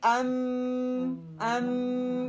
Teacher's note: आवाज को नाक की तरफ ले जाया जाता है और फिर उसको अदा किया जाता है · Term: मेम शद के गुन्ने